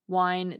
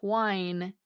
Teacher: Linguists call this dropping of formerly pronounced H's the wine-whine merger, wine, W-I-N-E, and whine, W-H-I-N-E, because when people stop pronouncing the H, these two words sound the same. They've merged.